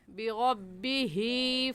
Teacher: ہا کے نیچے کھڑی زیر ہے، اس کو ایک الف کے برابر کھینچیں گے